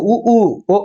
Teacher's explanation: உ ஊ ஓ அப்படிங்கறது உதடு குவியணும் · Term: இதழ்கள் குவிப்பதால்